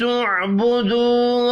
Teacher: عین ساکن ہے، قلقلہ نہیں کرنا